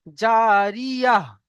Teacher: এই গোল তাকে আমরা তা পড়বো না, আমরা হা পড়বো। আর হার দেখেন, হা দু পেশ রয়েছে, দু পেশ পড়বো না, সাকিন করে দেয়। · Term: হা সাকিনের মতো